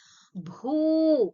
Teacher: ಭೂ is a ಮಹಾಪ್ರಾಣ and also you have to extend it bit that is ಭೂ you should ಸ that is called as ದೀರ್ಘಸ್ವರ